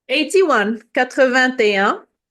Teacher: I'm doing the liaison, the link between the T, the last T, and the un. Mm-hmm. It's just because you have a voyelle in un.